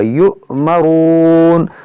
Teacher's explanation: حمزہ ساکنہ اس میں جھٹکا ہوا